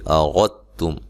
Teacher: را کو موٹا ادا کرنا ہے